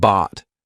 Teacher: t lots of times it'll be that held T So bought my tongue is still up there but I just didn't release it